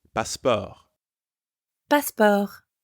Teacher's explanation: The pronunciation is almost the same as in English, but you don't pronounce the T sound at the end.